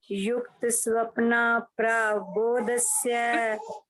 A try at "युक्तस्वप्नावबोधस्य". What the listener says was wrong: स्वप्नाव साथ व लगाओ ना, युक्त स्वप्नाव।